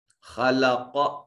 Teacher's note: خا کو مفخم پڑھیں گے، قاف کو مفخم پڑھیں گے، دونوں میں صفت استعلاء ہے۔